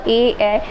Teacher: जिन स्वरों के उच्चारण में जीभ का अगला भाग ऊपर नीचे उठता हो, ऊपर नीचे उठता हो, वो अग्रभाग होते हैं।